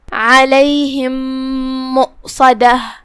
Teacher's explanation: یہاں حکم ہے ادغام متماثلین صغیر، مطلب ہم پہلی میم کو دوسرے میم میں داخل کر کے ایک ہی میم پڑھیں گے غنہ کے ساتھ اور تشدید کے ساتھ